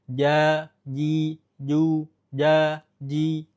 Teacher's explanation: Tapi secara default atau secara teori, jim ini tidak ada hamesnya, tidak ada hembusan udaranya. · kita kebiasaan mengucapkan huruf jim ada ujung lidahnya nempel, padahal dia melayang. Ya, ujung lidahnya tidak menempel, silahkan dilihat gambar makhraj jim.